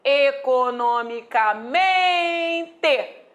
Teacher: Deixa de ser proparoxítona essa palavra e agora é paroxítona pois a tônica recai sobre a penúltima sílaba